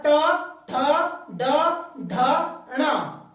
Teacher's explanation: जीभ अंदर फोल्ड होती है, फोल्ड होकर झटके से बाहर आती है, यह है हमारा मूर्धन्य।